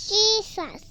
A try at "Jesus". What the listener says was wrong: Don't put your thing out. Put it inside.